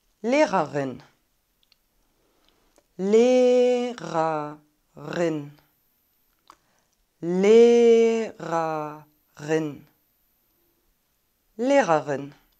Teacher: Dann haben wir ein langes geschlossenes E und wahrscheinlich finden einige es schwierig, die beiden R-Laute so kurz hintereinander zu sprechen.